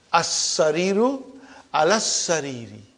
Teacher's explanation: I did not pronounce lam. And in as-sariru, I only pronounce hamza. And I did not pronounce the lam. But if I say alas-sariri, I did not pronounce hamza.